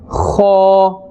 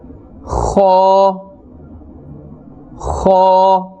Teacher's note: it is pronounced from the top part of the throat. This will give you a scraping sound